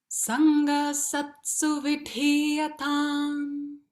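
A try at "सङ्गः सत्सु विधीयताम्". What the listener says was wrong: Make sure you get that sakara. Remember that the visarga turns into sangas. Sangasatsu. So you got double S there. Sangasatsu.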